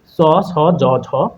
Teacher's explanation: তালু স্পৃষ্ট ব্যঞ্জন চ, ছ, জ, ঝ, অর্থাৎ হচ্ছে আমাদের জিভটা তালুতে লাগবে